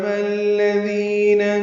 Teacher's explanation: دی آئے مدہ ہے، دو حرکات لمبا کریں گے